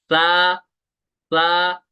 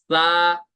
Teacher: जुबान का सिरा और ऊपर के दांतों के अंदरूनी किनारे से सा अदा होगा